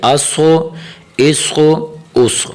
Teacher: صاد موٹا کر کے پڑھنا چاہیے، آواز کو تھوڑا سا گول کر کے، منہ کو تھوڑا سا گول کر کے پڑھنا چاہیے. اسخو اسخو اسخو.